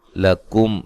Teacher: میم ساکن کا اظہار ہے، غنہ نہیں کریں گے۔